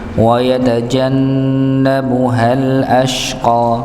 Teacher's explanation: Ya, wa yatajanna sama seperti sebelumnya nggih, maka didengungkan. Ya, ketika huruf nun bertasydid maka didengungkan, ditahan terlebih dahulu.